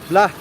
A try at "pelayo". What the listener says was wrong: Pla. It's not B, it's P. Pa. P for parrot.